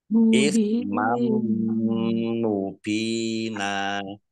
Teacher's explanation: Fathah tanwin bertemu dengan huruf mim bacaan idgham di gunah juga ditahan 2 harokat